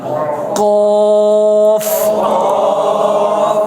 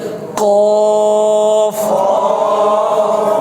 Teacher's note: এই জিহ্বার গোড়া থেকে, জিহ্বার গোড়া উপরের তালুর সাথে লাগবে, মনে করেন এটা হচ্ছে জিহ্বা, এটা হচ্ছে গোড়া, তাহলে এই জিহ্বা গোড়াটাকে আপনি যদি ফিট করেন উপরে, এই হলো তালু, কেমন?